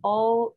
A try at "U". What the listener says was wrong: Solamente en una, no me recuerdo cuál, cómo fue que dijiste. En la U dijiste O y es U.